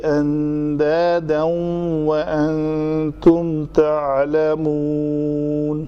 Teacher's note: یہاں پہ کیا ہے؟ تنوین کے بعد حروف یرملون میں سے واو ہے، تو یہاں پہ ادغام ہوگا، وہ ناقص ہوگا، کم ادغام ہوگا